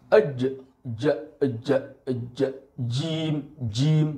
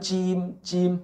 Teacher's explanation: Jadi huruf Jim ini bukan di bukan di ujung lidah atau di Pangkal lidah Bukan tapi ada di tengah-tengah lidah dan menyentuh langit-langit atas